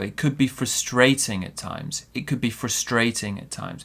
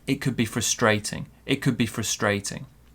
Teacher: We're putting the stress on the adjective.